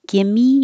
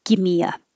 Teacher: your tongue is very high and then it comes down for an uh